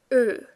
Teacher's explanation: Round lips, no R.